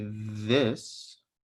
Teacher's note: when you say this the th in this the vocal cords are vibrating so this is voiced